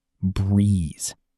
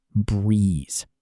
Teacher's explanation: Vibrate vocal cords. Make sure your vocal cords are vibrating to make a buzzing Z sound, not a hissing S sound.